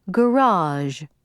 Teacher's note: slow down and hold your tongue in the Z and let it die out rather than to try to cut it off